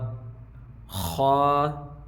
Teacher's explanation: خا، یہ دیکھ لیجیے حلق کے اوپر والے حصے سے